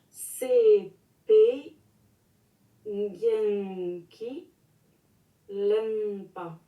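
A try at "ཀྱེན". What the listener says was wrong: La seule chose, c'est que c'est plutôt kien plutôt gien. C'est kien. Ça, c'est vachement important parce que gien, tout de suite, quand j'entends gien, j'entends ornement. Et gien, ben, c'est pas kien.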